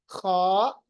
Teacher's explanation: खा थोड़ी सी खराश होगी, खा, और थोड़े होंठ जो है वो गोल भी हो जाएंगे